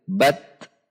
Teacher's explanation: Perhatikan sifat dan makhraj huruf ta. Setelah syiddah, setelah tertahan, huruf ta ada udara yang mengalir.